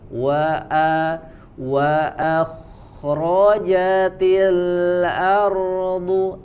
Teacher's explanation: Wa manyunkan dulu, kemudian huruf kho-nya tebal. Tapi hati-hati di huruf hamzahnya jangan tebal.